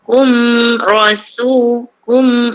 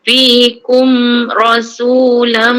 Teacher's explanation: Mim mati jumpa ra ni izhar syafawi terus je. Touch and go. Rapat bibir. Kum rasu kum bila dia je terus sebut ra.